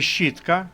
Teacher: літера щ позначає два звуки Ш і ч і ч уже пом'якшений